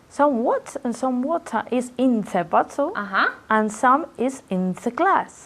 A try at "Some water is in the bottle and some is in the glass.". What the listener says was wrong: Very good. Excellent.